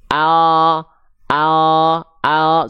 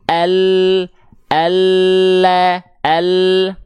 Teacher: samping lidah bagian depan yang kanan dan yang kiri dua-duanya nih menyusur sampai ke ujung lidah disentuhkan ke langit-langit kita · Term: huruf lam